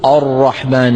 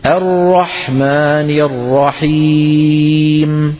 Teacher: شوفوا الهمزة مرققة، الراء مفخمة